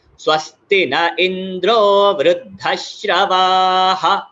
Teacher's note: अह का उच्चार यहाँ पर हमें स्पष्ट देना पड़ेगा, क्योंकि हम उसको ड्रॉप नहीं करते, वृद्धश्रवा ऐसे करके छोड़ नहीं सकते, अह का उच्चार देना है, ठीक है।